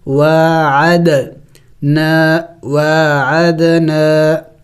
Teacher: دال بھی حروف قلقلہ میں سے ہے اور ساکن ہے تو قلقلہ کریں گے یعنی ہلا کے پڑھیں گے